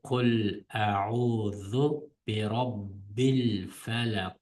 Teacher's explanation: Bu qof harfi sukunlarda falaqo deb mana o'qiymiz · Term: Qalqala